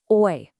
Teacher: It's the sound in coin or boy. Again, it's two sounds, an a and an e, just blended together perfectly